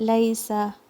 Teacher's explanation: یومئذ یہاں پر لین ساؤنڈ ہے پھر اس کے بعد عین لین ساؤنڈ ہے اور لیسا اگین ایک اور لین ساؤنڈ آ رہا ہے لیسا لیسا نہیں لیسا لام کے اوپر فتحہ اور پھر یا پہ یا کا لین ساؤنڈ سین ایک ہی کاؤنٹ دینا ہے آپ نے سین کو سافٹ پڑھنا ہے آپ نے صفیر کے ساتھ